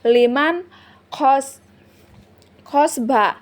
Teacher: nun sukun bertemu dengan huruf kho atau huruf izhar, dibaca jelas tanpa dengung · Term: izhar halqoi